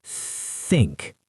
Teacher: You have to stick your tongue slightly between your teeth and blow air out. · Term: th sound